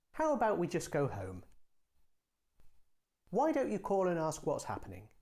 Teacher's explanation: To make a suggestion, use a falling tone.